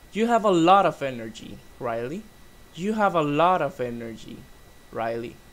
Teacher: it's like going down up and then going down again is going with falling intonation and with a little stop before the name